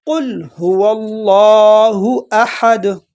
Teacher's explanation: یہ جو دال ہے اس پر تھوڑا سا قلقلہ کریں گے